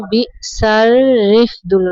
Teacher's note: را کو یعنی را کے نیچے زیر ہے، را کو باریک پڑھنا ہے